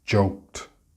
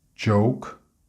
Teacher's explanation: the k is much softer in the participle form than in the infinitive form. In this example, we use joked, but it is joke in the infinitive.